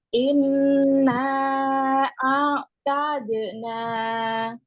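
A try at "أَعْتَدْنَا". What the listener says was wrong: Jangan dijeda. Tadna. Nggak boleh dijeda seperti itu ya. Nanti dikira wakof di situ. Ya, langsung. Tadna.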